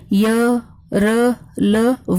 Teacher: इनके उच्चारण में जिह्वा किसी विशेष भाग को नहीं छूती। ये चार हैं, य, र, ल, व। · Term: अंतस्थ व्यंजन